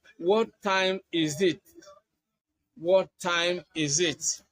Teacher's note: You can also use intonation in asking WH questions. And in asking WH questions, you use falling intonation to signal completeness.